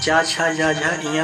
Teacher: जीभ का अग्रभाग जो होता है वो मुख के कठोर ताल को स्पर्श करता है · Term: तालव्य व्यंजन